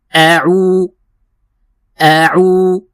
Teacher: عین کو ہم وسط حلق سے ادا کریں گے اور ہم پڑھیں گے عو عو عو، اور تھوڑا سا کھینچیں گے اس کو، کیونکہ عین کے بعد واو ہے تو اس کو دو حرکت کی مقدار کھینچنا ہے